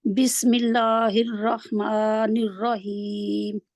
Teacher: आप रा को मोटा करेंगे नून को साथ में मोटा नहीं करेंगे